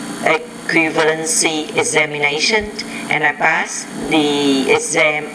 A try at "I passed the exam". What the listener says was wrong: You need to pronounce that P with a lot more air.